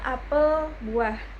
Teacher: Secara fonetik huruf e nya diucapkan terbuka dan lebar.